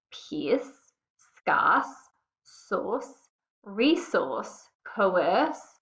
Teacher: where the r is a schwa we're not really hearing that letter R it's an unstressed sound